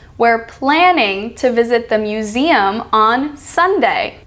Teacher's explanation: See how only part of the word of planning, the second part, and the part of the word of museum, the second part, is stressed?